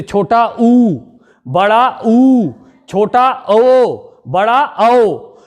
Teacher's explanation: व्रत का अर्थ होता है गोलाकार। जिन स्वरों के उच्चारण में हमारी मुख की आकृति गोलाकार हो जाए वे कहलाएंगे हमारे व्रतमुखी